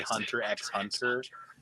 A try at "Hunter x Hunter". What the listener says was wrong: It's Hunter x Hunter. You don't pronounce the S.